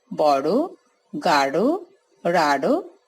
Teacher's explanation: ডয় শূন্য র ও ঢয় শূন্য র বর্ণে দোতিত ধ্বনি জিহ্বার অগ্রভাগের তলদেশ দ্বারা অর্থাৎ উল্টো পিঠের দ্বারা ওপরের দন্তমূলে দ্রুত আঘাত বা তাড়না করে উচ্চারিত হয় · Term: তাড়নজাত ধ্বনি